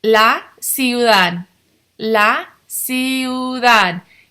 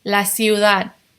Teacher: This D Sandwiched between two vowels is almost a TH sound.